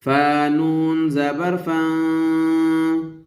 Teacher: نون ساکن ہے تو یہاں پر اخفا ہو رہا ہے